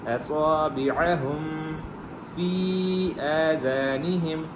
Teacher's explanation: ہا جو ہے وہ ہا حلق والی نہیں ہے، سینے والی ہے